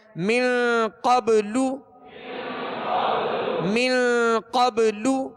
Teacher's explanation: قاف کو پر پڑھیں گے حروف مستعلیہ میں سے ہے اور من پہ غنہ کریں گے اخفا کا غنہ ہے